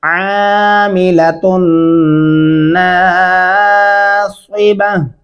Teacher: ता और नून पे गुन्ना होगा और स्वाद को स्वाद की जगह से अदा करना है, यहाँ सीन नहीं डालना वरना गलती हो जाएगी।